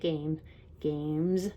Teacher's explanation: another s that sounds like a z